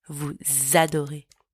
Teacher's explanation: Don't forget to do the liaison between the S and the A.